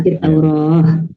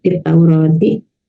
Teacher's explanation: Jadi huruf ta itu berubah menjadi suaranya H ya